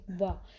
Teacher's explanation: जब आप वाह बोलेंगे तो क्या होता है गाइस, आपके जो दांत है वो आपके होठों से टच होते हैं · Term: दंतोष्ठ्य